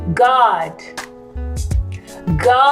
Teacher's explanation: i heard the vowel ah i didn't hear oh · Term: musical vowel